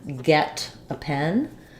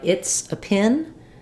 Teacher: the E is more open and the I is more more closed